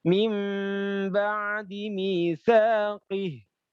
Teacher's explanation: Alladzina yanquduna 'ahdallahi mim dengung juga nun sukun ketemu dengan ba iklab